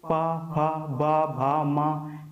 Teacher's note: दोनों ओष्ठ एक दूसरे के संपर्क में आते हैं वहां पर हमारा ओष्ठ व्यंजन कहलाते हैं।